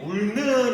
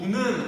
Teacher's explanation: 울는 이라고 하지 않고 우는 혹은 운이라고 해서 여기도 리을이 탈락되었다